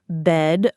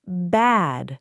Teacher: Shorten your vowel for bed and stretch it for bad.